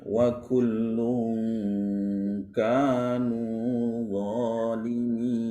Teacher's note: kalau tanwin bertemu dengan huruf kaf dan huruf qaf, ya, jadi dengungnya yang menonjol